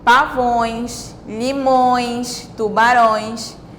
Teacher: Então, tanto no singular quanto no plural, forma esse som nasalizado, forma esse som nasal, né? O som que sai pela boca e pelo nariz ao mesmo tempo.